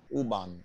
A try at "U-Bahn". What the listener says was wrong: U-Bahn. you're supposed to emphasize more on the words, no? U-Bahn, not U-Bahn, U-Bahn.